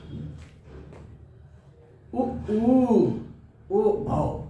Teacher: उ ऊ, ओ औ, बोलकर देखिए आपके ओठ बिल्कुल गोलाकार हो जाते हैं। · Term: वृत्तमुखी स्वर